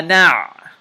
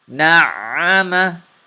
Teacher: Whenever a noon has a shadda on it, you have to do ghunna on it. You have to hold the sound in your nose a little bit. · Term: ghunna, or nasalization